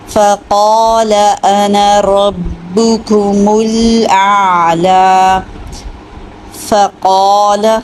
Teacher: قاف موٹا بھی ہے اور دو حرکت لمبا بھی ہے کیونکہ اس کے ساتھ الف مد ہے، ٹھیک ہے، فا اور لام کے اوپر صرف زبر ہے، اس کو لمبا نہیں کرنا۔